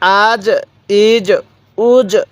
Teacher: জিমটা একটু ধাক্কা দিয়ে পড়বো কারণ জিমটা হচ্ছে কলকলার হরফ